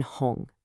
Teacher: This is not your English H. It's made in the back of your throat, almost like you're gently clearing it. There should be some friction there. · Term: the H sound